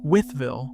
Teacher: three syllables folding into two the way it's said on the ground